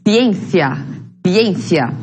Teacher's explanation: Bueno, en esta parte, ciencia, yo pronuncio de esta manera, ciencia, pero hay regiones que van a pronunciarlo con la lengua entre los dientes